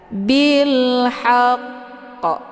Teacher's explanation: Nah, cara membaca huruf qalqalah ini yaitu kita perlu menyempurnakan tasydidnya dulu, kemudian baru disertai dengan pantulan yang kuat di akhir bacaannya. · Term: qalqalah kubra